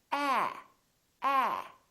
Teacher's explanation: your lips are open and your tongue is down and your tongue is tense ah ah in British English this sound very frequently sounds like